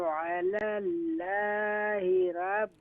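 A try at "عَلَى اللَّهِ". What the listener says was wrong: Alallahi. Allah name is recite more full mouth. Alallahi.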